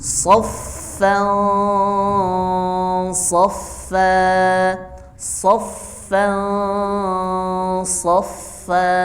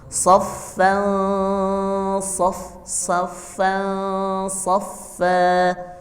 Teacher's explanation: Ikhfa-nya tetap terdengar sifat tebalnya huruf shad.